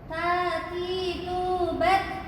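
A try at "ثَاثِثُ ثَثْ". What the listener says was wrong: Tati tu bat. Bat. Ada desisnya. Bat. Coba Mas.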